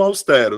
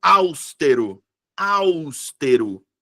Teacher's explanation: sílaba tônica é a penúltima sílaba, então é paroxítona.